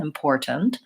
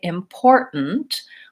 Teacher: Americans will typically say important where they will stop that T